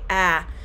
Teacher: the front of your tongue is pushed forward and held lower in the mouth when forming the short a